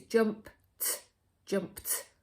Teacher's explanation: the thing that we do find tricky at school is that jumped sounds like ends in a t doesn't it so it sounds like it's jumped jumped but actually it's an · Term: ed ending